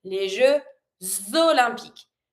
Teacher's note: Olympique starts with a little vowel, so same as usual, you're going to link it.